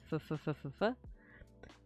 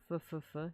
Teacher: when I say f, it's my teeth touching my lips. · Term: F sound